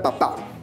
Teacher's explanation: está dentro del grupo de las palabras agudas, porque la mayor fuerza de voz se encuentra en la última sílaba